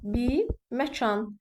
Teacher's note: artıq şəkilçi hissəsində uzanma hadisəsi baş verdi. Bi uzandı.